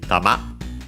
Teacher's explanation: The accent is on the ma, okay, on the last syllable